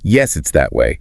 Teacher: points and says yes it's that way emphasizing that to show the direction · emphasizing that to show the direction. Yeah, stressing demonstrative pronouns like that helps make it clear what you're referring to.